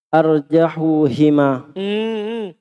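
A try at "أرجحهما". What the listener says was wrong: Ha itu kalau sebelumnya doma apa harokatnya? Fathah, pantasan salah. Itu ha. Nah, kalau sebelumnya doma dia di doma. Kalau sebelumnya fathah dia di doma. Sebelumnya kasro baru dia di kasro.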